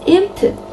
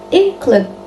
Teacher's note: the nasal sound change its place of articulation to match the following consonant. This process is known as nasal assimilation.